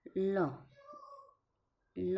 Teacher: જીભનો આકાર ઊંધા નળિયા જેવો થાય અને હવા જીભની બે બાજુએથી ઘસાઈને પસાર થાય · નંબર 6, પાર્શ્વિક ધ્વનિઓ. તો જીભનો આકાર ઊંધા નળિયા જેવો થાય અને હવા જીભની 2 બાજુએથી ઘસાઈને પસાર થાય તો એ પાર્શ્વિક ધ્વનિ કહેવાય છે. જેમ કે આપણે જોઈએ તો લ, નું ઉચ્ચારણ. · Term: પાશ્વિક ધ્વનિ